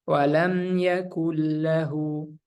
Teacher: Jadi kita meleburkan huruf nunnya ke lamnya langsung tanpa dengung. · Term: Idgham bila gunnah